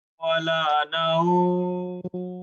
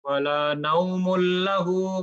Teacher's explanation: না থামলে নরমালি আমরা পড়ে যাব, ওখানে কোনো টান নাই। থামলে এক আলিফ থেকে 4 আলিফ পর্যন্ত আপনি টানতে পারবেন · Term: মাদ্দুল লিন